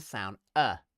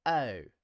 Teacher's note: the diphthong o begins with the sound uh okay that's very important people tend to think that it's o